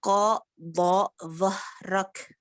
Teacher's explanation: Huruf tebal bertemu huruf tebal, maka ditebalkan semuanya, tidak boleh ada yang tidak, apalagi itu nun sukunnya harus tebal juga. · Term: huruf isti'la